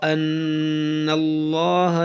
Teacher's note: نون مشدد ہے اس میں غنہ ہوگا